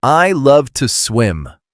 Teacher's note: make sure you don't over pronounce the two. It's just t.